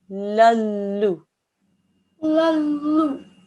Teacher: there'll be no nasal sound at all, just a lallu